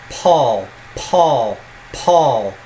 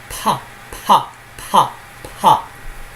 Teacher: This exaggeration makes it come out like Paul, Paul, Paul. You hear a sort of whisk in there. That's the plosive aspiration going on. Paul. And this is different from the unplosive, the non-plosive aspiration, where you have pa, pa, pa, pa.